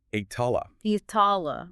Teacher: It involves adding an I sound at the beginning and a T sound in the middle. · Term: eighth form